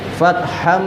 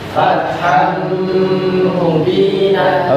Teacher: Karena ada tanwin bertemu huruf mim, maka dimasukkan dan didengungkan. Fathan menjadi fatham. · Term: idgham bigunah